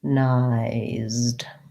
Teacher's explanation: synchronized changes the syllable stress to the first syllable.